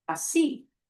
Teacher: Oh, ends in a vowel, but the way we say that word, we have to punch the end of that vowel. So that breaks the rule.